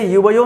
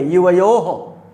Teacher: अच्छा, ये जो दोनों बिंदी लगी इसे विसर्ग बोलते हैं, इसे आधा हा पढ़ते हैं। इसे युवयो नहीं पढ़ेंगे, युवयो हो, आधा हा का उच्चारण करेंगे। और इसे आधा न या आधा मा पढ़ते हैं, जैसे इवा नहीं पढ़ेंगे, इवाम।